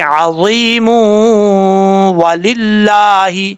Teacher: جب یہاں پہ سٹاپ کریں گے، وقف کریں گے تو میم ساکن ہو جائے گا، اور ملا کے پڑھنا چاہیں گے تو میم کو واو کے ساتھ کنیکٹ کر کے پڑھیں گے